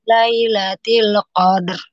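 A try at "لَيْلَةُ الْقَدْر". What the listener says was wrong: lamnya, afwan, lamnya dialirkan lagi. Lailatul Qadr, ya. Nah, kemudian roknya juga dialirkan. Lailatul Qadr.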